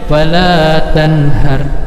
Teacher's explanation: Huruf ha, maka hukumnya ini adalah izhar. Dibacanya jelas, dibaca pendek.